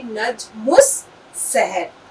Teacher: یہ جو لام ہے بس اس کی آواز کہیں بھی نہیں نکلے گی